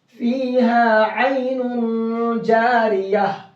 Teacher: گول تا پر وقف کرنا ہو تو وہ ہائے ساکنہ بن جاتی ہے